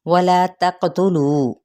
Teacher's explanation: वाव होंठों की ना तमाम गुलाई के साथ, ला पे मद सिबिल अलिफ, क़ाफ पे कलकला किया जाएगा।